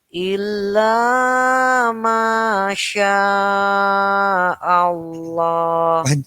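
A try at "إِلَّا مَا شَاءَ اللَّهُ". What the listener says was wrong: Kepanjangan. Yang depan tadi sudah benar. Cuma shinnya maksud kula. Illa ma Allah.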